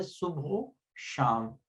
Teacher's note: درست طریقہ یہ ہے کہ واو کو ہم پہلے لفظ کے آخری حرف سے ملا کر پڑھتے ہیں